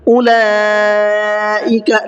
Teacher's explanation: اولئک لام کے اوپر بڑا مد ہے. مد متصل کا قاعدہ ہے اس کو 4 سے 5 الف کی برابر کھینچ کر کے پڑھنا ہے